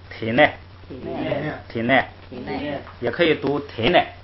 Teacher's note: 把那个内读成那个轻声，体内就成了这个双音节词了